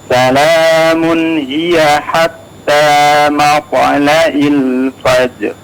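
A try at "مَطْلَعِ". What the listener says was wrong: Matla'i. Ainnya agak kurang jelas ya. Silakan dimaksimalkan sekali lagi.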